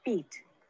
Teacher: The sounds E and I are one tense lax pair. My mouth is tense when saying the long E sound, beat.